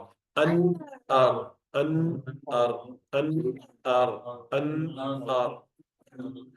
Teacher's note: With ra, the tongue goes up, and in the center of the tongue, where the tip is, you leave a small space. That is why when you pronounce a ra, you do trilling.